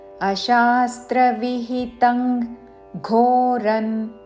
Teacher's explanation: అనుస్వారము తర్వాత క వర్గములోని అక్షరము ఘ ఉన్నది కాబట్టి క వర్గములోని అనునాసిక అంగ్ ఉచ్చారణతో